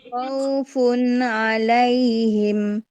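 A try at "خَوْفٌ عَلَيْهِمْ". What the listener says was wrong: Jangan masuk hidung Bun. Khawnya. Khaufun. Hati-hati jangan masuk hidung. Tadi yang di tengah agak masuk hidung ya. U-nya yang kadang wawunya itu Bun. Yang ketika dia menjadi lin ya.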